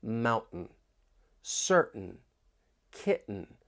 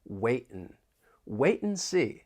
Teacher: listen for that glottal T when I say mountain, certain, kitten. The sounds coming from your throat